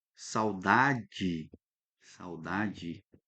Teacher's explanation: quando a gente usa o E, por exemplo, aqui, ó, saudade, saudade, ele tá lá no finalzinho, a gente fala ele, pronuncia ele como I, saudade. O O, por exemplo, aqui, ó, pão.